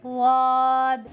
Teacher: बाएं जानिब की करवट बाएं जानिब की दाढ़ों पर लगाकर अदा करेंगे वाद